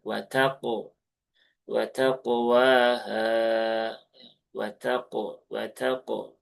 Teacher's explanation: Maka pastikan juga ee pantulannya itu tebal ya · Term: qalqalah